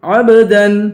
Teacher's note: عین کو با سے ملائیں گے، با پہ قلقلہ کریں گے · دال پر غنہ نہیں ہوگا